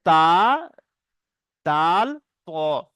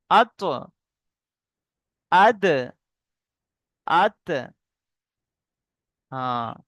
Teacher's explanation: জীবের আগা এবং সামনের উপরে দুই দাঁতের গোড়া সামনের উপরে মানে সামনে যে দুটো দাঁত আছে সেই দাঁতের গোড়া